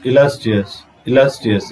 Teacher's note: This la syllable should be a stress. It should be pronounced clearly. So এই অংশটা illustrious শব্দের মধ্যে last অংশটাকে আমাদেরকে টেনে উচ্চারণ করতে হবে, পরিষ্কার করে আস্তে ভাবে স্পষ্ট করে উচ্চারণ করতে হবে. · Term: stress syllable